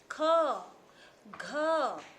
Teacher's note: महाप्राण में अधिक वायु और अधिक वायु और अधिक मात्रा में जो है हमारी व्यय होती है, और समय भी अधिक लगता है।